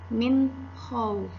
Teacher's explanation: Contoh, pada kalimat min khauf, huruf nun sukun bertemu dengan kho, maka bunyi nun sukunnya dibaca dengan jelas, min khauf. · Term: izhar